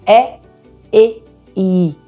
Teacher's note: as vogais anteriores como é e a minha língua vai direção ao palato